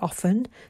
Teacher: So the T is silent.